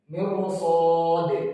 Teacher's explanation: Contohnya, mirsad, dibaca tafkhim ya, karena ada shod tadi.